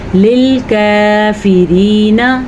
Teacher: या मद्दा हम अदा करेंगे और नून को किसी सूरत में हम लंबा नहीं कर सकते